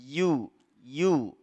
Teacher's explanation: setelahnya itu dia memiliki makhraj tersendiri yaitu di ee lidah bagian tengah yang menyentuh langit-langit mulut kita